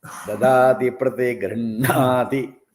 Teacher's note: the stress is on the grinha. So we have to be careful that we don't stress the gr. So gr is soft.